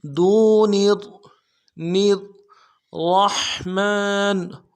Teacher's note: ملانا ہے، را کے اوپر تشدید زور دیں گے، دون الرحمن را کو موٹا کرنا ہے، را کو ہا کے ساتھ ملانا ہے، ہا کو گہرائی سے ادا کریں گے · نون کو را کے ساتھ ملانا ہے، را کے اوپر تشدید زور دیں گے ، دون الرحمن را کو موٹا کرنا ہے، را کو ہا